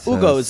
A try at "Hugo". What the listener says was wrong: Don't pronounce the H. Hugo, y'all.